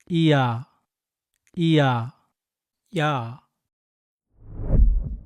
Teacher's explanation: In fact, the Y in ya actually shows the e sound. Ya is a sound made by quickly saying e and a together.